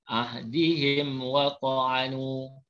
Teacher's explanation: mim mati bertemu selain daripada mim dan ba, namanya izhar syafawi, jelas tanpa dengung.